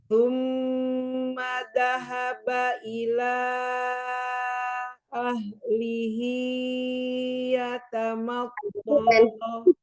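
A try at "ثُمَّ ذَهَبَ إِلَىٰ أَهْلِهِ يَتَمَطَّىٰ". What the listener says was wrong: Hiya kepanjangan, 2 harokat aja. Lanya yang 4. hi 2.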